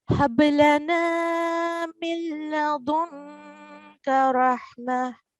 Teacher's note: However, it is followed by lam mushaddad. So no nasal sound will be made while joining, and we would ignore the noon completely.